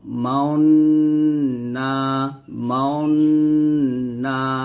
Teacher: ঠোঁট গোল করে গুন্না আদায় করতে হয় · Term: ইসমাম